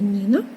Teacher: М'який приголосний тому що після нього стоїть і